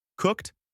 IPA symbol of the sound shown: t